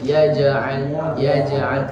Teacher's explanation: Kemudian ya ja'al, di situ ada huruf jim yang berharokat sukun. Di situ ada bacaan qalqalah yang harus dipantulkan dengan sedang, karena di situ sughra